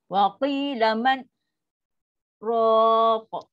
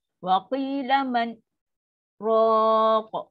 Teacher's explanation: Bunyi vacuum sekejap, pause sekejap tu. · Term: saktah